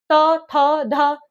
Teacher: त वर्ग में त, थ, ध दांतों का प्रयोग हो रहा है ना? · दांतों का प्रयोग हो रहा है ना, दांतों से उच्चारण हो रहा है ना, तो क्या आ जाएगा इसका, दांतों से दंत्य, दंत्य।